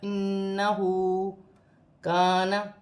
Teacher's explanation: الف مدہ ہے، 1 الف کی مقدار کھینچ کے پڑھا جائے گا